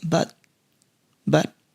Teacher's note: so it's reduced and T is stopped at the end